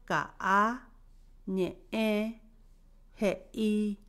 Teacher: es una consonante glotal, es intervocálica y sirve para hacer una pausa momentánea al hablar, en palabras como por ejemplo ka, ñe, je, i.